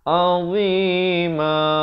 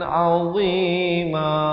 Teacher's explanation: Mulkan idhar halqi, sempurnakan bunyi tanwin, terus masuk. Azima, dot makhrajnya di hujung lidah macam huruf zal juga, tapi cuma bunyinya besar, bunyinya tebal ya. Cuba kita dengarkan.